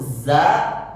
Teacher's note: bahkan ujung lidah nancap ke Pangkal gigi seri bagian bawah itu huruf Za